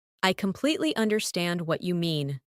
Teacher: Emphasize completely and understand.